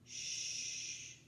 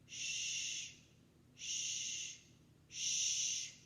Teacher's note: our tongue stays down, especially the back of the tongue, until it gets to the very tip that will go up. So the back of the tongue stays down, the tip goes up. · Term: sh sound